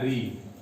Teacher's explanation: री अपने 18 भेदों सहित मूर्धा से उच्चरित किया जाता है।